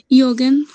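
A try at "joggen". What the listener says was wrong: ইয়োগেন হবে। আচ্ছা জগেন হবে, জগেন, জগেন, জগেন, ইয়োগেন বলে না, জগেন বলে, এটা জগেন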